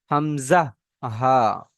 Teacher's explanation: তার মধ্যে সর্বফার্স্ট 1 নম্বর মাখরাজ হলো হামজা হা। এই হামজা হার মাখরাজ হলো হালাক বা কণ্ঠনালীর শুরু ভাগ হতে উচ্চারণ হয় হামজা হা